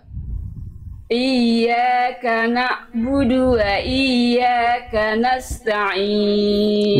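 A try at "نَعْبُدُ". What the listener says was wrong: Na'budunya diulang Bunda. Coba ikuti saya, ain sukun. Di situ ada ain sukun. Ain punya sifat namanya tawasud. Dia tidak boleh terhenti na'budu, tapi na'budu. Na'budu mengalir suaranya sedikit. Dia punya sifat namanya tawasud. Iyyaka na'budu wa iyyaka nasta'in.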